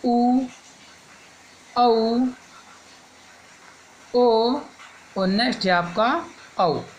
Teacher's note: वो स्वर जिनके बोलने पर आपका ओष्ठ वर्तमुखी हो जाए या गोलाकार हो जाए वो आपके वर्तमुखी कहलाते हैं।